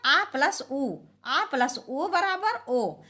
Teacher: स्थान क्या है कंठ उ का ओष तो इस प्रकार से ओ का उच्चारण स्थान हो जाएगा कंठ होष